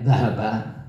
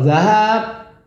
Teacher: Huruf mat ya. Zahaba kalau dengan huruf fathah pendek zahaba. Tapi kalau zahab bedanya fathah panjang.